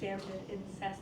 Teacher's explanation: So, right, it's a break from the iambic in the fact that we've added an extra syllable and it's now a feminine ending, but it maintains the flow without putting the syllable stress on cest.